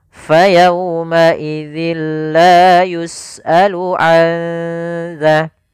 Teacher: Nun mati bertemu dengan zal yang mana zal termasuk huruf ikhfa, maka suara nunnya samarkan ke makhraj huruf zal. Maka azza sembari ditahan suara dengungannya sepanjang 2 harokat